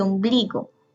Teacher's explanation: Ombligo lleva el acento en la penúltima sílaba, que es bli.